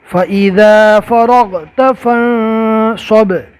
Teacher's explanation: با میں کلکلا ہوگا